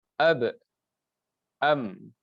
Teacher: ba dan mim tersebut tempat keluarnya ialah daripada dua bibir